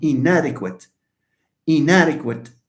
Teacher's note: So d is alveolar, and therefore the nasal here is alveolar.